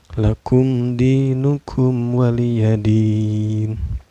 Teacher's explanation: Lakum di ini dihukumi izhar sapawi ya, karena ada mim sukun bertemu dengan huruf izhar sapawi yaitu dal ya. Cara bacanya mim sukunnya dibaca secara jelas ya, gak boleh dengung dan gak boleh memantul.